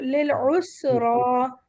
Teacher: یہاں پر ہمارے پاس عین کی آواز ہے، اسرا نہیں پڑھنا، اسرا، اور را بھی موٹا ہے